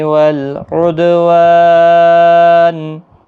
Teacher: دال ساکن پر قلقلہ ہوگا